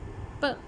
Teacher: तो आपका lower lip जो है वो एक्टिव आर्टिकुलेटर है और अपर लिप जो है वो आपका पैसिव आर्टिकुलेटर है · the structure is one of complete क्लोजर and sudden release of the sound articulated is a plosive sound.